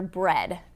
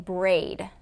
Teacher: So it was just, the only difference was in the vowel. He was doing a long a instead of a short e.